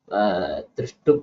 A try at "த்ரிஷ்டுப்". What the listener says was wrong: அந்த ஊ இல்ல திருஷ்டுப்புல திருஷ்டப்புன்னு இருக்கு. திருஷ்டுப்புன்னு ஊ மாத்திரா போடணும். அனுஷ்டுப்புல போட்டுக்க மாதிரி திருஷ்டுப்புலயும் ஊ மாத்திரா போடணும். ஊ மாத்திரா இருக்கா, ஊ மாத்திர தெரியல, திருஷ்டப்புன்னு தெரியுது எனக்கு.